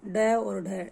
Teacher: तो हमारी जीभ किससे टकराती है? मूर्धा से टकराकर एकदम से पीछे हट जाती है। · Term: उत्क्षिप्त व्यंजन